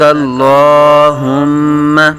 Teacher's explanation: ہم میم شدد میں غنہ کریں گے